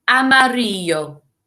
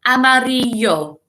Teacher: the double L, doesn't make a L sound like it does in English. It makes a Y sound.